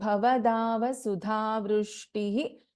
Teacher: we have a Visarga here followed by Pa. So, which is Upadhvaniyaha.